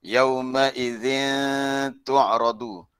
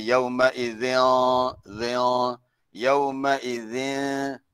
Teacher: tak boleh ditebalkan sangat zin tu sebab ta tu bukan huruf isti'la, ta tu huruf istifal. Kalau ditebalkan lain bunyinya yauma idzin, yauma idzin.